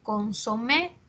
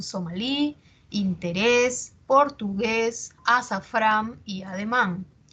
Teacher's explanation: Por ejemplo, consomé es aguda. Las personas dicen un consomé, al margen de cómo se escriba, la pronunciación es aguda. Lo mismo pasa con somalí, interés, portugués, azafrán y ademán.